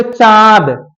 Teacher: बस यही है जो अनुनासिक से, जैसे बोलोगे चांद, चा तो बोल रहे हो, थोड़ा सा आपका प्रोनाउंसिएशन नाक से भी हुआ, ठीक है, तो नाक से कम प्रोनाउंसिएशन हो रहा है, मुख से ज्यादा।